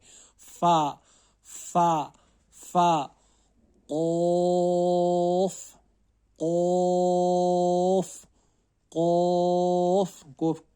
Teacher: जुबान की जड़ और ऊपर के तालू से कॉफ अदा होता है।